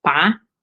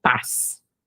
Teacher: a vogal é mais longa numa sílaba como pá do que como uma sílaba como paz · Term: encurtamento da duração da vogal